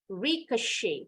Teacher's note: Bunyi T-nya hilang, huruf E-nya bunyinya jadi A.